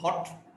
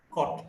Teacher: back, between open and half open, rounded, short vowel.